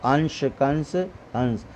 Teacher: अनुस्वार के बारे में हमने आपको समझाया है, इसका प्रयोग केवल नाक से किया जाता है, जैसे अंश, कंस, हंस।